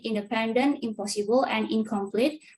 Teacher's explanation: For example, the sound de, p, and k in independent, impossible, and incomplete respectively influence the sound n in the prefix in that is attached to these words. So in the word independent, the prefix in remains the same, then it becomes im in the word impossible, while in the word incomplete, it becomes ing. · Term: regressive assimilation